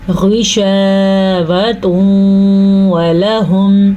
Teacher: غین کو پر پڑھیں گے کیونکہ غین ہمیشہ ہی پر یعنی کہ موٹا پڑھا جاتا ہے